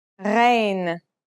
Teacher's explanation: Its sound is similar to the sound you make when you gargle, a sound that comes from a point deep in the throat.